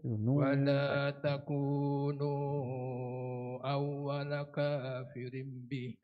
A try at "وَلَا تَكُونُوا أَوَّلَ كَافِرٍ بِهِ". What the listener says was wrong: Iklam. Lim ya, tukar pada mim ya.